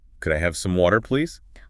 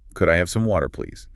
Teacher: Notice how the intonation rises slightly at the end as it is a question.